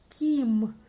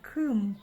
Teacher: если бы мы прочитали через «и», «ким», было бы совсем-совсем мягко. А вот если бы через «ы», было бы очень и очень твердо «кым». И так, конечно, прочитать можно, но неправильно.